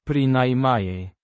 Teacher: An adverb meaning, at least, pronounced, Pri-nai-myej. with stress on the second syllable